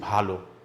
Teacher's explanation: যেমন ভাল, ভয়াকার ল, কিন্তু আমরা উচ্চারণ করছি ভালো, অর্থাৎ শেষে যে অধ্বনিটা আছে সেটা ওকার হয়ে যাচ্ছে